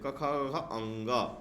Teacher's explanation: क वर्ग जो होते हैं वो गले से बोले जाते हैं